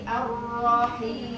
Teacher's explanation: Di orang tulis namanya Abdul Rahim, digayai Rohiem, pakai e. Padahal kalau Quran nggak boleh ada e-nya, harus i ar-rahim sampai waqaf.